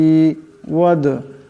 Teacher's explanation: ওয়াদ, এখানেও দাল সাকিন, দাল হলো কলকলা হরফ, তা আওয়াজে একটি টক্কর খাবে।